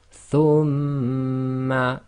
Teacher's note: shadda you always hold for 2, and we covered this in English, it's called gemination.